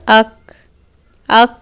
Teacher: ہوا باہر آ رہی ہے، یعنی کہ صفت ہمس بھی ادا ہو گئی